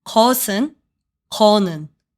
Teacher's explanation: Since 것, which means thing, has a final consonant, it takes 은. But in casual Korean, 것 is almost always shortened to 거. And because 거 no longer has a final consonant, 은 changes to 는.